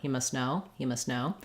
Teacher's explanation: you can probably get away with just dropping the T entirely as long as your S is fairly short